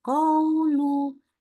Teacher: Antara fathahnya dengan U-nya gitu ya. Bacanya sama panjangnya tuh. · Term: sifat lin